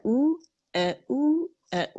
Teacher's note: آہستہ آہستہ حمزہ اقصی الحلق سے باریک نکلے گا